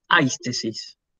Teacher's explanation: La siguiente palabra, aistesis, la sensación, ¿sí? Fíjense, el acento y el espíritu están ubicados sobre un diptongo. Se escribe en el segundo elemento, se pronuncia en el primero. Entonces yo por eso digo aistesis.